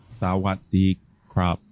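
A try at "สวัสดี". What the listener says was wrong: Sawadee krap. Sawadee. But sawadee. I can hear your throat isn't closing at the end of sawat. It's just pushing through. Sawat. So try this. Do this glottal stop at the end. Sawat.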